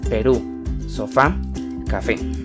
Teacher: Los 4 tipos de palabras que determinan la acentuación son: palabras agudas. Son las que llevan el acento en la última sílaba.